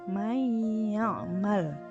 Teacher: nun mati lebur menjadi ya, May ya'mal, nunnya tidak terbaca karena bertemu dengan huruf ya, yaitu yang mana ya, idgham bigunah.